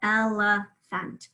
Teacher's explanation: we can actually hear a schwa both in the second syllable and in the third syllable